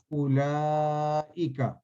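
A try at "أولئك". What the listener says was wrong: اس میں آپ نے نا واو پہ نہیں لام کے ساتھ جوڑنا ہے، اولئک۔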